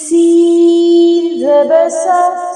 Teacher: سین میں سیٹی ہوتی ہے اور یہ باریک ہوتا ہے